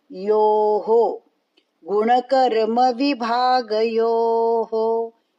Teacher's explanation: यो हा बोलना नहीं, यहाँ पे हा विसर्ग नहीं यो हो आएगा